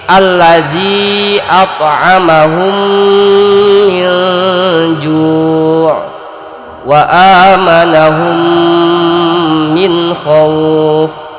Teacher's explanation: maka bunyi mim yang pertama masuk ke mim yang kedua, dimasukkan, diidghamkan. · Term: idgham mimi